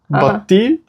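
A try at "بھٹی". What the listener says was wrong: Bhatti. Bhatti. Say bha. Bhatti. It's hard to say the bha, be and hey together.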